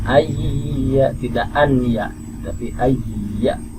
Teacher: Kemudian idgham bi gunnah juga salah satunya ya, ada di tempat yang lain, yaitu ketika nun mati bertemu ya, ayya, ya, idgham dilebur, bunyi nunnya hilang menjadi masuk ke bunyi huruf ya